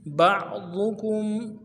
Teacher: عین کو موٹا ادا کرنا ہے، ضاد کو موٹا ادا کرنا ہے اور کاف کو میم کے ساتھ ملانا ہے، میم ساکن غنہ کریں گے۔